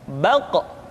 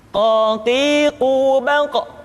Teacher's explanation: Diucapkan dengan suara yang tebal dan dalam posisi sukun, maka terdengar pantulan suara.